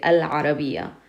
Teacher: And in this one you have ayn, and ayn is qamari. It doesn't use your tongue. Therefore you pronounce the al. We say al-arabiya.